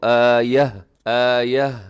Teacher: مد، اور 4 سیکنڈ تک لمبا کیجیے گا۔ او تأتینا آیہ، گول تا پہ جب وقف کرتے ہیں تو اس کو ہا کے ساتھ بدل دیتے ہیں · جب پڑھیں گے تو آخر میں آپ کے ہا کی آواز بھی آنی چاہیے